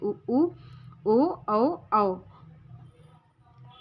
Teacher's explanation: उच्चारण में ओठ गोलाकार होते हैं वे वृत मुखी स्वर कहे जाते हैं